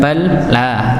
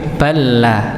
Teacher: Lam yang pertama tidak dibaca, maka apa? Diberi tanda tasydid agar bnya itu langsung masuk pada huruf lam yang kedua. Balla ya bukan bal la tapi balla langsung nggih. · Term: idgham